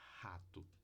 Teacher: A glote é a abertura das cordas vocais. Então, quando você só deixa o ar passar pelas cordas vocais, você produz essa fricativa surda, que pode ser o início de rato, tá? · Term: glotal H